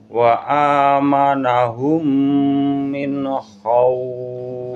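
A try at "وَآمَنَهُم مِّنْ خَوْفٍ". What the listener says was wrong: Jadi belakangnya panjang. Agak panjang.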